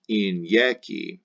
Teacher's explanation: the first and the third eyes are vowel eyes pronounced like the second i is consonant i pronounced like ya like a y in yaki